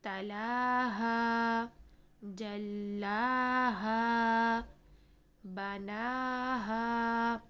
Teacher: نا اور ہا دونوں کو 2 کاؤنٹس کا ٹائم دیں گے